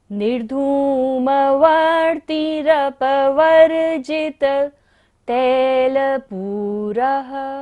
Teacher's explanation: पूरः पर विसर्ग है, इसलिए सांस का विसर्जन करना है।